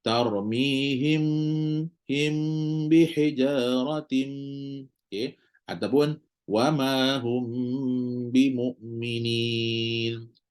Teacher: bila hukum kita jumpa mim mati bertemu ba oke apa yang kita nak buat adalah rapatkan bibir